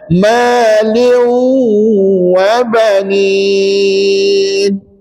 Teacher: Jadi tanwin tu dimasukkan bacaannya ke dalam huruf waw. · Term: idgham ma'al ghunnah